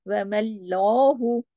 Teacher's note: अब यहाँ देखिए, वमल बारीक है, वमल, यहाँ तक हम आए, लाम बारीक है, सब बारीक है, लेकिन जैसे ही हम लाम पे गए, वमल्लाहु, अब एक उसका खड़ा जबर भी पढ़ना होता है ना, वमल्लाहु, हाँ पे हु सिर्फ एक ही हरकत पड़ा जाएगा, हु को ज्यादा नहीं खींचना।